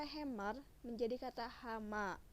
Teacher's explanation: satu vokal yang tidak mendapatkan tekanan suara diasimilasi kepada vokal yang mendapatkan tekanan suara yang muncul di depan dan di belakangnya. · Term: asimilasi vokal progresif